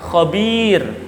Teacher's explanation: cara membacanya adalah khabir tanpa dibaca tanwinnya, karena kalimat ini dinamakan mad arid lis sukun dan dibaca panjangnya 2 sampai 6 harokat.